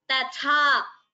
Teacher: the first ta is alpa prana, tha is maha prana.